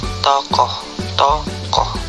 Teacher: Vokal O. Vokal belakang, sedang bawah, bundar, semi terbuka